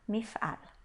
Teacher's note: Apesar da última sílaba ser uma sílaba fechada, ela é a sílaba tônica da palavra, então a gente lê como um A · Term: kamatz